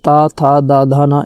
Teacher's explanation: त थ द ध न इन सभी का उच्चारण जो है दंत से होता है। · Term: दंत्य